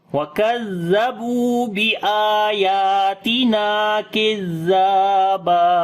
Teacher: زال کو نرم پڑھیں گے، با کو لمبا کریں گے، واو مدہ ہے، حمزہ کو لمبا کریں گے